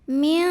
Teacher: Min ada ikhfa ab'ad karena ada nun sukun yang menghadapi huruf kaf. Cara membaca nun sukunnya adalah dibunyikan samar-samar, siap-siap menuju kaf, disertai bunyi dengungan. Jadi ini bunyi dengungnya besar karena kaf ini makhrajnya jauh dari nun.